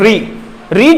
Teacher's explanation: मुंह के बीच का स्थान वो मूर्धा कहलाता है। और जब हम री बोलते हैं तो हमारी जीभ मूर्धा से टकराती है